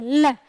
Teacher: जीभ ऊपर लगती है, यानी कि हमारे ऊपरी हिस्से पर टच करती है। मुंह की जो ये गोल सी छत है, ऊपरी सतह है, उसको स्पर्श करती है, लेकिन हवा मुंह के साइड से बाहर निकलती है। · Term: पार्श्विक व्यंजन